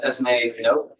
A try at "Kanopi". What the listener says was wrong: No, you have to pronounce every letter. So it's Kanopi, no silent letters.